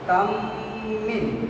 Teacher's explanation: মিম সাকিনের পরে মিম আসিলে গুন্নার সহিত মিলাইয়া পড়িতে হয় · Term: মিম সাকিনের ইদগাম